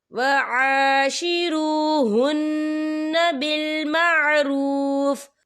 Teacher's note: وقف کی صورت میں فا ساکن ہو جائے گا.